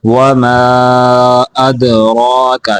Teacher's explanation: دال کے اوپر قلقلہ کرنا ہے، را کو موٹا بھی کرنا ہے، لمبا بھی کر کے پڑھنا ہے